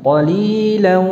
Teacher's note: Kemudian qalilan, ini juga ada tampak gunnahnya, ya. Suara dengungnya jelas.